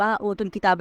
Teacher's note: اوتوا الکتاب میں کاف جو ہے وہ باریک پڑ جائے گا، اوتوا الکتاب یعنی ہلکی آواز سے۔